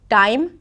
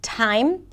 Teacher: when it comes to underpronouncing the aspirated sounds, like 'time' instead of 't(h)ime', the T might actually be perceived as a D. And I do think that shifting the placement a little bit might help the sounds sound a bit more crisp in English.